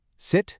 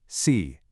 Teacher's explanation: On the left, we have the short relaxed I. On the right, the long tense E.